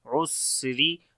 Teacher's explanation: ہوگی، عین کو گلے کے درمیان والے حصے سے پڑھیں گے، سین کے اندر صفت حمز اور سیٹی کی آواز یعنی صفت صفیر ہوگی